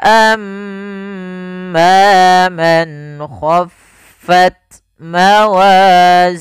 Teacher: ada mim tasydid bacaan gunah yaitu suaranya menahan dulu suara mnya sepanjang dua harakat